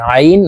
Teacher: আইন কে হলুকের মধ্যখান থেকে চাপ দিয়ে উচ্চারণ করতে হবে